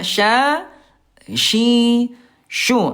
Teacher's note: dibangun huruf syin dia alistifal turun pangkal lidahnya. Semua huruf yang turun pangkal lidahnya semuanya tipis